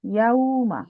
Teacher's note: ইয়াও না, আপনি এখনো ইয়াওই হচ্ছে, কারণ কি, কেন ও ইয়াও হচ্ছে, কারণ হচ্ছে আপনার মুখটা টাইটলি এনসার্কেল হচ্ছে না, এই জন্য। ওয়াও সুকুনের জন্য আমাদের মুখটা টাইটলি এনসার্কেল করার কথা, মানে গোল করে ফেলার কথা। ইয়াও ও তো হচ্ছে ইয়াও, কারণ আপনি মুখটা পুরো গোল করতেছেন না।